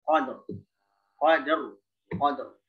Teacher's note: Dal itu sifatnya dia syiddah lalu menjadikan qalqalah. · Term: Syiddah qalqalah